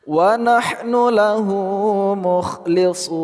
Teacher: hu, panjang dua harakat mad silah qasirah